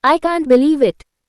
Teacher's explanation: practice putting stress on the word believe and using Rising intonation to convey surprise or disbelief